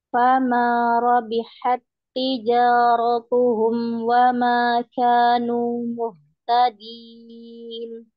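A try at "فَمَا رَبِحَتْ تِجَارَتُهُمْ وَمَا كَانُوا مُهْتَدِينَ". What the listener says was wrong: ya, masya Allah nunnya nu nggak mau masuk hidung. Wa ma kanu muhtadin, nu kanu,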